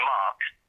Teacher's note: And for example, in English, if you say the name Mark, the R is almost silent